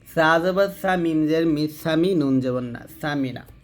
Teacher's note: তো সাটা পাতলা করে উচ্চারণ করবেন